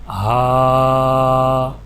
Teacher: جیسا کہ یہاں پر ہا کے اوپر کھڑا زبر ہے تو ہا کو 1 الف یعنی 1 سیکنڈ کھینچ کے پڑھا جائے گا